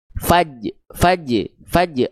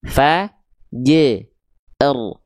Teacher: Jim sukunnya diperjelas, ro sukunnya tetap dibaca.